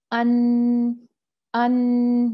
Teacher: دیکھیں آپ کو یہاں پر نا جھنجھناہٹ سی محسوس ہوتی ہوگی، تو یہی جو ہے یہ غنہ کا مخرج ہے، خیشوم